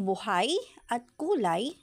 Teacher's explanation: mapapansin na ang mga tunog ng patinig na U at A ay magkatulad, ngunit ang mga katinig ay magkaiba